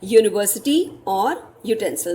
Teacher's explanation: अब यू तो वॉवल है, बट जो साउंड आ रही है वो य की आ रही है, तो हम इसके आगे अ यूज करेंगे.